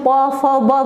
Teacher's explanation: प फ ब बोल रहे हैं तो हमारा ऊपर और नीचे का होठ आपस में चिपक रहा है। तो ये कौन सा व्यंजन हो जाएगा, ओठ से बोला जा रहा है, तो ओष्ठ व्यंजन।